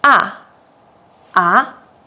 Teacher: The third tone is a little longer than the second tone, and it contains two pitches, down and up.